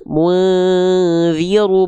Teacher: Mung terlalu kuat harusnya ketika ditutup masih nyisa suaranya berarti dia ikhfa yang tidak mendekati eng